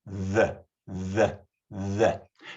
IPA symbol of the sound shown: ð